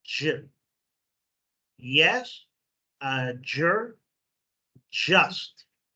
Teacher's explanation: It's kind of a mix between the d and the j, j. It's kind of a harder hit.